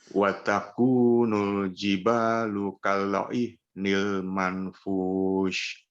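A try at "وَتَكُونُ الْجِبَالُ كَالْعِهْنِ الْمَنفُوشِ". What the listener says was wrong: Di sini ada ikhfa ya Pak ya. Ada nun yang tidak punya tanda baca. Maka numpang tanda bacanya siapa? Tanda bacanya si fa ya. Kalau dikatakan ikhfa ya, ikhfa atau dengung yang menyamar dengan huruf setelahnya, dengung yang saru dengan huruf yang setelahnya, maka jangan disampaikan ke makhrajnya Pak. Jangan sampai kepada makhraj nun.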